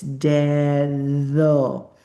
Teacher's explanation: The Spanish medial D equals the English TH voice sound.